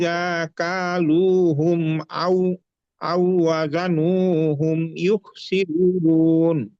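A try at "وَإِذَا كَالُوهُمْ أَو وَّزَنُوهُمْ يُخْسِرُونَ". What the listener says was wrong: দা হরফটা একটু শক্ত হয়ে যায়। ওয়াইদা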